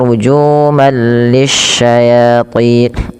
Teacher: Nah, apabila ada tanwin bertemu dengan lam maka dinamakan dengan idgham bila gunah. Cara membacanya langsung masukkan tanwinnya ke huruf lam yang bertasydid. Tapi tidak disertai dengan penahanan karena dia bila gunah.